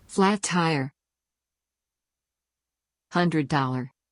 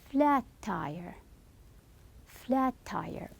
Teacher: the sounds merge pronounced as a single sound except that the sound is held longer flat tire so you will stress much more on the T